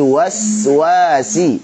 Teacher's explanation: Sin tajam, tipis, mengalir suaranya, rokhawah.